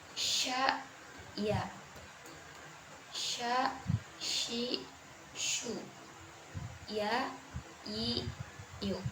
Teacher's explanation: huruf shin dan ya, tengah lidah dan langit-langit di atasnya itu tidak begitu menempel